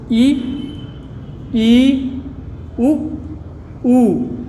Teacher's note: जो आपके मुख की वायु है वो लगभग अवरुद्ध हो जाती है, उसे हम संवृत्त स्वर कहते हैं।